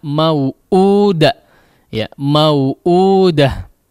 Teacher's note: Di sini hamzahnya dimadkan sepanjang 2 harakat saja.